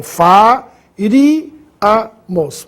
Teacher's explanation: Mais uma vez, proparoxítona, sílaba tônica no ri, agudo no i.